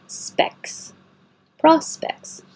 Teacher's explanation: you don't have to say this T at all. Just specs.